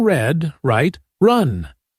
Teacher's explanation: Another common challenge is the R sound. In English, the tongue doesn't touch the roof of the mouth for er. Instead, it curls slightly upward inside the mouth.